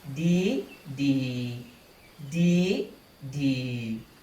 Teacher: you change the tone of the first one from midtone d to high tone d